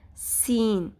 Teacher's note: اور سین اور صاد میں یہی فرق ہے کہ سین جو ہے اس میں بھی سیٹی کی آواز ہے لیکن وہ باریک پڑھا جاتا ہے، اسمائل کے اسٹائل میں ہونٹوں کو اسٹریچ کیا جاتا ہے